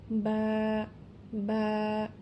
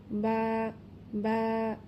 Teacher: দুই ঠোঁটের ভেজা অংশ থেকে বা উচ্চারিত হবে।